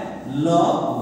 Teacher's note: जिह्वा एक बार ऊपर ताल को स्पर्श करती है और क्या है जी आपकी जो श्वास है वो अगल बगल से बाहर निकलती है, वो क्या है आपके पार्श्विक व्यंजन है।